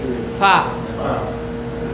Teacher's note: উপরের দাঁত, নিচের ঠোঁটের পেট, ফা স্পর্শিত হয়।